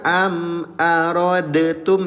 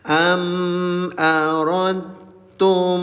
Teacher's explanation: Namanya idgham mutajanisain. Jadi sifat qalqalah pada huruf dal ini tidak berlaku. Langsung masuk ke huruf ta, leburkan.